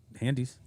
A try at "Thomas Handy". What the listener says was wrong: Thomas Handy, not Handies, but Thomas